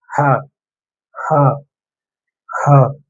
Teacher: அதாவது தொண்டையோட உள்பகுதியில இருந்து ஒலி வரும்னு சொல்லுவாங்க.